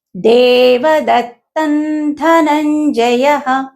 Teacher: దేవదత్తన్ తర్వాత వచ్చినటువంటి అక్షరము ధ కాబట్టి ఇక్కడ అనుస్వరము నకారంగా పలకాలి